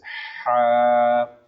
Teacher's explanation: ہا کو حلق سے ادا کرنا ہے اور ہا کو نرم انداز میں نکالنا ہے